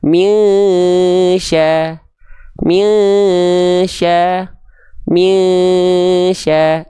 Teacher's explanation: udah Ikfa Hakiki udah dibacaannya samar dengung minya minya minya ditahan dua harakat oke nah jadi enggak dibaca